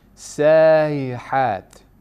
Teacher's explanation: This again does not have nabra. We have tasheel of the Hamza and without lengthening, without mad.